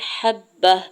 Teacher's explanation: ہا کے زبر کو با مشدد کے ساتھ ملاتے ہوئے پڑھنا ہے